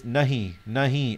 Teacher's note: you'll notice that I've got a nasal sound. It's not nahi, it's nahi, nahi.